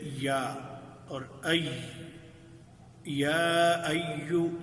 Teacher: دونوں آوازیں وسط اللسان مقابل تالو سے جب لگتی ہے تو اس سے ادا ہوتی ہیں۔ ان کو حروف شجریہ کہتے ہیں۔